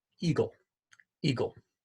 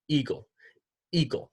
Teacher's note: closes that is a glottal stop and what's happening is that the glottis the space between the vocal cords is shutting to keep the air from coming out so Eagle you trap the air your closure glottis then you